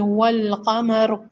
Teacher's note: لام سے ملایا ہے، یہ لام پڑھی جا رہی ہے، قاف حروف قمریہ میں سے ہے